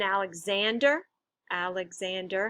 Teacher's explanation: And it's Zan that's actually stressed in that word.